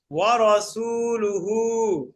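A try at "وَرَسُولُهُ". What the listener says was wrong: ওসুলুহুটা টান হবে ওসুলুহু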